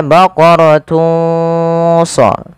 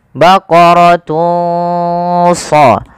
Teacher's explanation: Maka teman-teman samarkanlah suara dhammatainnya, suara unnya kepada huruf shad.